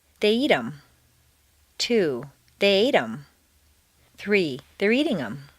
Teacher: in fluent speech, the th of them is frequently dropped, as is the h in the other object pronouns, him, her.